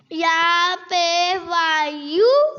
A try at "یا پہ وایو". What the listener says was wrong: غلط. کیا غلطی ہوئی ہے؟ واؤ کو لمبا نہیں کیا. یہ واؤ مدہ ہے نا. دیکھو واؤ جزم والی ہے. یہ دیکھو واؤ کیا ہے اور اس سے پہلے پیش ہے تو واؤ کو کیا کرنا تھا؟ آپ نے لمبا نہیں کیا.